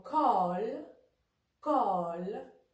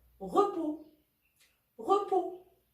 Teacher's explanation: Le O ouvert, comme dans col, col. Et le O fermé, comme dans repos, repos.